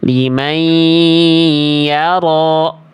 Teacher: Nah, itu cara melafalkan idgham biguna. Jadi dileburkan bunyi konsonan n-nya pada huruf berikutnya.